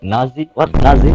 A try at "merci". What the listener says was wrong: No, with a no. No, no, no, with a M, M. Merci. Merci.